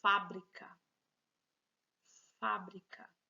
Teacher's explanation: Se a sílaba mais forte, a sílaba mais evidente é o Fá, que é a antepenúltima, então eu tenho uma palavra proparoxítona.